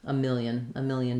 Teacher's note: So the y glide is a quick iya, but I think for most people, visualizing it this way, million, can be helpful. Not much vowel in that second syllable. Keep that really reduced.